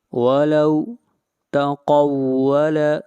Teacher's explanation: قاف کو موٹا پڑھیں گے، قاف حروف مستعلیہ میں سے ہے